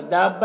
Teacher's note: दाब्बा में यहाँ पर मद्द लाजिम है, इसे भी 3-4 अलिफ के बराबर खींच कर पढ़ते हैं।